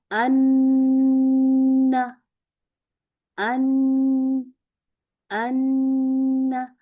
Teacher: हमारी जुबान का जहर तरफुल लिसान यानी कि सबसे आगे वाला जो बारीक सा किनारा है, ये हमारे ऊपर के दांतों के मसूड़ों के बिल्कुल जो जड़ें हैं ना, वहां पे चिपक जाता है। ठीक है, तो लफ्ज अदा होता है अन, चिपका के रखें।